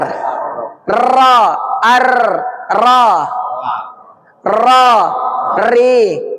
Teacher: La sedikit ke depan, na sedikit ke belakang, ro dia tidak nempel tapi getar